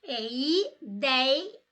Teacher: esta palavra tem o ditongo aberto ei e ela é paroxítona. A sílaba tônica é a penúltima.